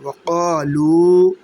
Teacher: لام واو پیش لو کو بھی ایک الف کے برابر کھینچا